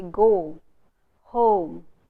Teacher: It's not home, it's home, oh. So the diphthong is turned into a vowel sound by Indian learners of English.